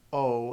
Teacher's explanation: short o and long o are both going to have the same type of sound and are going to be differentiated only in terms of length